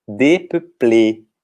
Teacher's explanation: O E com acento agudo, então, tem o som do nosso E fechado.